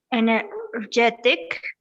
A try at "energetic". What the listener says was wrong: Energetic. Can you say it with energetic, con la R, energetic?